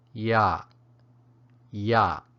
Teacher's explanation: it has the creaky stop tone